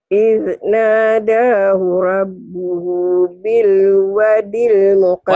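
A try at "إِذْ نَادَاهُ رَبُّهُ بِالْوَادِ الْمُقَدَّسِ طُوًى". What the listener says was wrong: Wanya panjang. Bil wadil muqaddasi tuwa. Bil wadil. Nadahu rabbuhu bil wadil muqaddasi tuwa.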